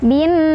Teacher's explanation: nunnya juga dia punya hukum gunnah musyaddadah karena ada nun yang bertasydid. Cara bacanya berdengung ya.